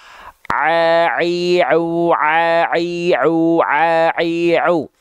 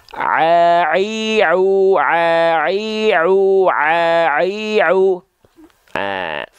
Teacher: pastikan huruf ain teman-teman sekalian lafalkan tepat dari bagian tengah tenggorokan dan dia mengalir ya dari tengah tenggorokan jalurnya ke rongga mulut semua dan masuk ke luar mulut.